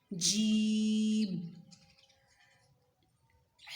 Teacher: زبان کا جو درمیان والا اوپر والا حصہ ہے نا وہ تالو کے ساتھ اوپر لگائیں. پوری نہیں لگے گی، ہلکا سا بھی لگائیں تو کافی ہے.